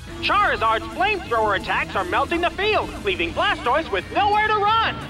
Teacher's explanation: we can hear the preposition to being reduced to a d sound here